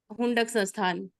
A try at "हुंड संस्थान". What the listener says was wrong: हाँ, हुंडक नहीं बोलना है, अब हुंड बोलना